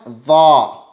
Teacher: تو اس کا مخرج ہے زبان کی نوک اور ثنایا علیاء کا کنارہ، یہاں سے ادا ہوتا ہے حرف ضا۔ اسے بھی پر پڑھیں گے، موٹا کر کے پڑھیں گے۔